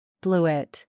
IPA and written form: ˈblu ɪt (bluet)